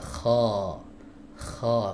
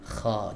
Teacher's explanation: Fathahnya tebal. Jadi fathahnya baca tebal. Maka suaranya ini diarahkan ke langit-langit ya. Kha, karena huruf kha punya sifat isti'la.